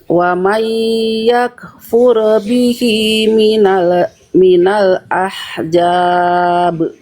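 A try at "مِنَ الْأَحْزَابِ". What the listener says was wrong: Jangan ahjab, ahza, zai. Zai. Kalau tadi Bunda baca jadi huruf jim. minal ahjab udah pasti beda makna, beda huruf. Nah, jangan ya. Minal ahzabi.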